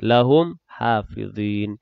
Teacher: Mimati bertemu dengan ha, izhar syafawi jelas baca mimati